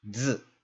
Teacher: And that's this syllable right here, which is pronounced z. So this syllable is basically pronounced like just the consonant that you see, the Z, and the I isn't really pronounced. There are a couple syllables that are like this, where you're only going to hear the consonant make a sound.